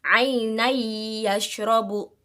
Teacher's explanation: Di sini ada tanwin, ada fathatain bertemu dengan huruf ya, maka cara bacanya adalah memasukkan dengan dengung